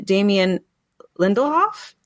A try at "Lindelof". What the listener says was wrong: Nope, just Lindelof. No, you're just adding extra like words, consonants.